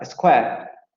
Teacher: square, que se va a pronunciar con la vocal anterior semiabierta no labializada